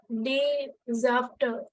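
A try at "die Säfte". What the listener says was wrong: It is the zefter. Apart from E, we also add or we also change the umlaut. We add an umlaut over A. So it becomes zefter. Der Saft, the zefter.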